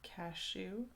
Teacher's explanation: you place the emphasis on the second syllable